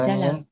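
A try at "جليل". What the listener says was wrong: Bukan jalal. Jalil kan asalnya jalil.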